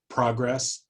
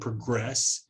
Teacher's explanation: you can clearly hear that the the stress shifts from the first syllable uh in progress in the noun to progress to the second syllable in the verb